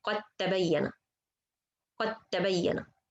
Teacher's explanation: the first letter is sakin by itself. I just merge it in the second letter. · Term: idgham